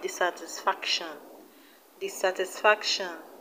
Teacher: dissatisfaction the stress is on fact